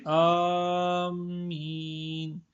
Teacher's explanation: مد کے الف کو کھینچ کر پڑھیں